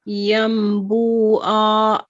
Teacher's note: You prolong the ain instead of reading it as a double fatha an.